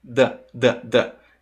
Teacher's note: O the, quando a gente fala mais rápido, ele fica com um som quase que de D. The. E o som do D é próximo do som do T.